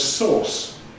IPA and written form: sɔːs (source)